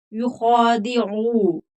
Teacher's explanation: युखादिऊन अल्लाह वल्लज़ीन आमनू, युखा, खा पूर पढ़ा जाएगा, हरूफ मुस्तालिया है, खड़ी जबर है तो थोड़ा खींच कर पढ़ेंगे। युखादिऊ, आइन हरूफ हल्की है, हलक से निकलेगा, ऊ नहीं करेंगे, हमजा की आवाज नहीं निकलेगी। आइन ऊ, खींच कर पढ़ेंगे।